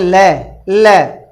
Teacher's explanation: ल आपकी जीत मुर्दा वाले पार्ट पर टच हो जाती है और वायु जो है वह दोनों तरफ से बाहर निकल जाती है · बगल से इसका प्रयोग इसलिए होता है जब हम इस वर्ण का उच्चारण करते हैं, ल, आपकी जीभ मुर्दा वाले पार्ट पर टच हो जाती है और वायु जो है वो दोनों तरफ से बाहर निकल जाती है। ल, आपकी जीभ आप मुर्दा वाले पार्ट पे बिना टच किए ल नहीं बोल सकते कभी भी। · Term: पार्श्विक